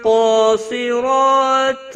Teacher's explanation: قاف اور صاد دونوں حروف مستعلیہ میں سے پر پڑے جائیں گے، قاف کے اوپر کھڑی زبر ہے، ایک الف کے برابر کھینچ کر پڑھا جائے گا۔